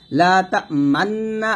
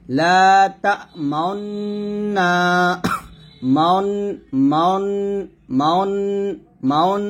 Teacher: লা তা মান্না আছে, এখানে মান বলা যাবে না, বলতে হবে লা তা মাউন্না, মাউন মাউন মাউন মাউন, এরকম। অর্থাৎ ঠোঁট গোল করে যে উচ্চারণটা আসবে সেটাই সঠিক, এখানে মান্না বলা যাবে না। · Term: ইসমাম